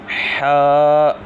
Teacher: ح جو ہے حلق کے درمیان والے حصے سے ادا ہوتا ہے